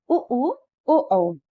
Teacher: इसको बोलते समय होठ गोलाकार होते हैं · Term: वृत्त मुखी